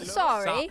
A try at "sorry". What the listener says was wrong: Your vowels are all messed up. Deep in the throat.